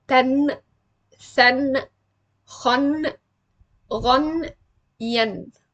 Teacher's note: I say the noon clearly, like tan, than, khan, ghan, yen. I clearly pronounce the noon and I stop over it, like it has a very clear sukoon. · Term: Izhār